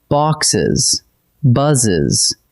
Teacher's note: the extra E adds a whole spoken syllable